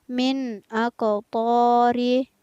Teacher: nun sukun yang bertemu dengan huruf alif, maka nun sukunnya dibaca jelas. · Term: hukum bacaan izhar